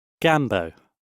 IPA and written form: ˈɡambəʊ (Gambo)